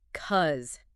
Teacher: It almost always reduces to cuz. The initial B syllable disappears completely, and the vowel in the cause part is often reduced rapidly to a schwa or something very close to it right before the final Z sound.